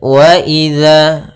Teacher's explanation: Hati-hati dalam melafalkan zalnya jangan dibaca waaiza. Ini kesalahan yang sering terjadi yaitu mengganti huruf dalal dengan huruf zai.